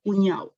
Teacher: Tenemos, por ejemplo, que son más trillados, más usados, como vemos que la palabra correcta es cuñado, pero muchos dicen cuñado. Lo que observamos aquí en cuñado, hemos omitido la D, es decir, la consonante de la última sílaba. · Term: síncopa